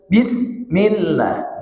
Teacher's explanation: huruf sin ada nama sifat rokhwah. Dia suaranya mengalir.